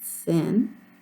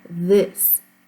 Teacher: there's one that doesn't move anything in your throat at all, and then there's one that vibrates.